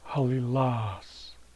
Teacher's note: So the accent goes on the last syllable. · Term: accent placement